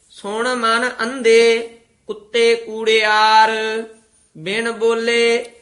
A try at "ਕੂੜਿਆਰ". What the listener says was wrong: ਕੁੜਿਆਰ ਔਂਕੜ ਨਾਲ ਨਹੀਂ ਕਹਿਣਾ, ਕੂੜਿਆਰ ਬੋਲਣਾ।